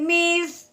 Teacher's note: आगे मीम के नीचे आ गई है ज़ेर, आगे है सा, सा के ऊपर जज़म आने की वजह से सा साकिन हो गया। सा को हमने नरमी के साथ अदा करना है, सख्ती से सीटी वाली आवाज़ नहीं निकालनी है। सा का मखरज क्या है कि ऊपर वाले दांत नीचे वाले दांतों के दरमियान में हमने ज़बान की नोक लेके आनी है।